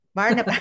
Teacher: Accent on the second syllable.